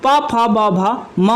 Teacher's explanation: ओठ आपकी दोनों हैं तो ओठ से उच्चारण स्थान हो रहा है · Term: ओष्ठ से उच्चारण स्थान